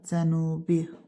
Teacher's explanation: Cənubi sözündə, cənubi u uzun tələffüs olunur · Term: qapalı sait uzun